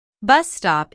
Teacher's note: bus stop is a compound noun with the main stress on the first word